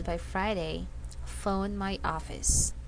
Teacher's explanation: the intonation jumps up and Falls a little